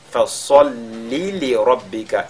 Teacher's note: la lettre sod, n'est-ce pas, qui est avec at-tafkhim, avec agrandissement.